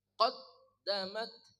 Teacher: qof dari pangkal lidah